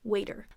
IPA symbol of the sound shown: eɪ